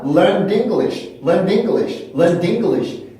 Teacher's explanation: 이게 그 규칙 동사임에도 그 앞에 유성자음으로 끝이 나서 그 다음 발음 기호가 드 발음 소리를 갖고 있거든요. 그러면 연음이 된다고 하더라도 원래 소리를 갖고 있어요.